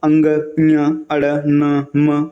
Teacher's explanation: अनुनासिक व्यंजन का उच्चारण करने में जो हवा है ये नाक से बाहर निकलता है